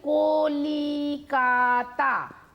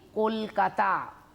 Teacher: খুব তাড়াতাড়ি উচ্চারণের জন্য মাঝখানের একটা স্বর লুপ্ত হয়ে গেল, লি, কলি, কলিটা উড়ে গিয়ে কলকাতা হয়ে গেল। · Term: মধ্য স্বরলোপ